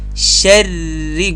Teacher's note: کله چې را مشدده ده، دغه را چې وایاست باید د را آواز مات نسی. شری ګورئ د را آواز جریان لري.